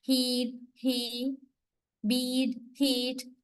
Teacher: one particular vowel you can find in the high front area, which means the corner, high front corner of the cardinal vowel diagram